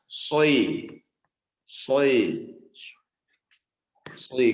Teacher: Kayak ada unsur u dan i-nya gitu ya. Soi. Tapi sebenarnya jangan dibuat sui gitu ya, tapi memang itulah efek daripada kita menahan angin di mulut. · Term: itbak